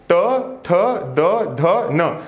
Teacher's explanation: जब आप इनका उच्चारण कर रहे हैं तो आपकी जीभ जो होती है वो किसको टच करती है, दांत को टच करती है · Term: दंत्य